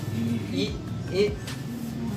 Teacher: Contohnya misalnya di bagian front, misalnya pada huruf I, front high, maksudnya bisa dilihat lidah kita berada bagian depan, dan pada bagian high, rahang kita itu hanya sedikit terbuka. Contohnya bisa kita peragakan ketika Anda menyebutkan kata I, bisa dirasakan lidah kalian berada di depan dan rahang kalian tidak terlalu terbuka.